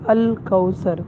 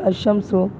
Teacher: اور ادغام کی مثال الشمس کہ یہاں پر لام نہیں پڑھا جا رہا، ڈائریکٹ الف کو جو ہے شین کے ساتھ ملایا جا رہا ہے، تو اس کو جو ہے ادغام کہتے ہیں۔